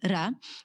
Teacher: you use the trilled R like ra